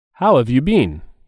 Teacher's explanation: Have and you are said together, and there's a stress on the word been.